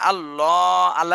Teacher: শব্দ মোটা করতে হবে ডানে জবর রয়েছে